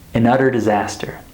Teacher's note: I want to point out first the linking, the final N with the beginning vowel